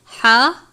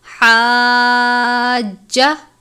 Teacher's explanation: حاجہ، الف سے پہلے زبر ہے، الف مدہ، یہ ہا باریک والی ہا ہے، حلق سے ادا کرتے ہیں ہا اور عین کو۔